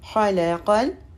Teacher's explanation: خا پہ زبر ہے، لام پہ زبر ہے اور قاف جو ہے لام سے ملے گا